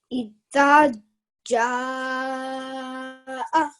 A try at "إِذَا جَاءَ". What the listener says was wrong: Okay, but also remember that you have to stretch this one for 2 seconds as well because of the alif madda. The dal has a fatha followed by an alif madda, so that is why you must produce the 2-second sound, and then the jim has a maddul kabir on it, so we must produce the 5-second sound.